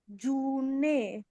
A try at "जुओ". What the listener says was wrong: ना, ये ना नहीं है। स्वर वर्ण है। ओ। ओ। हम लोगों ने देखा था कि ऊ के ऊपर देखिए, इतना तो ऊ है। ऊ के ऊपर एक स्टैंडिंग लाइन लगी हुई होती है, तो वो ओ हो जाता है।